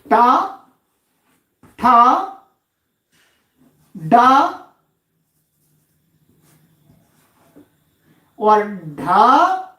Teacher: कहते हैं इन वर्णों का स्थान मूर्धा है जी, मूर्धा। इनके उच्चारण में जो जिह्वा का अग्रभाग है वो मूर्धा में लगना चाहिए।